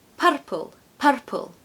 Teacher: it's a rotic accent which means they pronounce their R's a tapped R is actually quite a strong R almost a · a tapped R is actually quite a strong R almost a rolled R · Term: rhotic accent